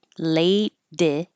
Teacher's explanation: this T changes to a D.